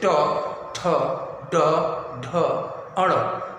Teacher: मूर्धा का मतलब आगे वाला भाग, जिह्वा का जो आगे वाला भाग है वह ऊपर की ओर उठता है। जो ऊपर वाला दांत जहाँ से निकला हुआ है वहाँ पर जिह्वा जाके टकराती है